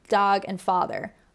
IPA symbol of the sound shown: ɑː